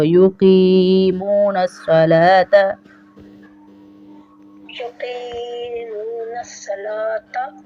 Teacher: نہیں، قاف کو یہاں پہ تھوڑا اس لیے کھینچیں گے کیونکہ یا ساکن ہے اور اس سے پہلے زیر ہے تو یا مدہ ہے. یا مدہ کو ہم ڈراپ نہیں کریں گے، کھینچیں گے